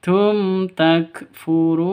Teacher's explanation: Mim mati bertemu dengan ta. Cara bacanya jelas terang. Tidak boleh disentak, tidak boleh di panjangkan.